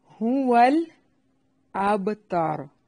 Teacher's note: ہا کو اس کے مخرج سے نکالنا ہے، اقصی حلق. ہا کا مخرج اقصی حلق ہے.